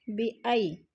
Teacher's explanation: جیسے بیوتہم بِأَیْدِیہم بِأَی یا ساکن سے پہلے حمزہ کے اوپر زبر ہے تو یالین کو لمبا بھی نہیں کرنا اور جھٹکا بھی نہیں دینا